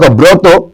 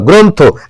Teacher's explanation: আদ্য মানে আগে অ এর উচ্চারণ কি সাধারণত ওকারের মত হবে মানে শুরুর উচ্চারণটা কি করতে হবে ওকারের মত মানে এই অটা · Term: অযুক্ত রফালা